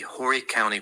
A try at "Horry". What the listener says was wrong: it's Horry. The H is silent.